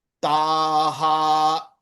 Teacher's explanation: The Visargam ha takes on the property of the associated syllable. The associated syllable is ta. Ta is a dirgham. So the ha will also be dirgham. Taha, not taha.